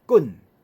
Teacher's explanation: 台语的第2声滚，第2声音量就较大